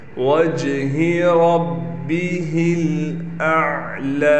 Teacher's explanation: लाम को इसलिए खींच रहे हैं, लाम पर कड़ा ज़बर है